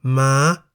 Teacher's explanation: On the other hand, we have Ma, meaning horse, in the high tone because the single syllable in the word Ma begins with a low-class consonant Ma and has the tone mark Mai To.